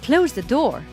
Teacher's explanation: Close and door that I stressed. I didn't stress the.